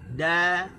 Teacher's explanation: Okey, cuma kena ingat huruf apa yang perlu kita ingat adalah huruf dal perlu disebut dalam keadaan nipis. Okey, dal perlu disebut dalam keadaan nipis. Hujung lidah kena letak di gusi. Da, bagi atas kena buka, bagi bawah kena sengih, bagi depan kena muncung.